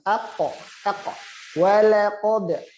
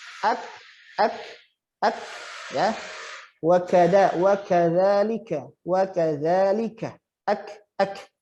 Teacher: Cuma bedanya huruf kaf ini lebih depan lagi dibanding huruf qaf, sedikit saja. Kalau huruf qaf itu pangkal lidah yang lunak, kalau huruf kaf ini yang lunak tapi mau mendekati yang kasar.